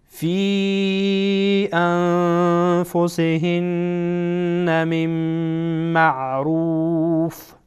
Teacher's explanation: خب اگر خواسته باشین وصل بکنین فی انفسهن من معروف، میم بعد از نون ساکن میم آمده، میم از حروف ادغام میکنیم. من معروف، روف را در اینجا پر خوانده میشه.